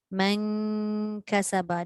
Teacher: dengung tetap ada. Tapi bunyi nun yang asal telah disorok sebab dia nak jumpa dengan huruf ikhfa.